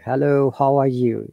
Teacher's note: and if my voice is straight like hello how are you it's not going anywhere same monotonous it is called monotonous or same intonation